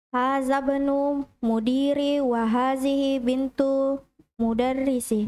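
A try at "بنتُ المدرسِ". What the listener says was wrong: Bintul, jangan hilang alnya. Mudarrisi.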